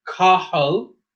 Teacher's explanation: a TH has just the aspirated H sound, like in hat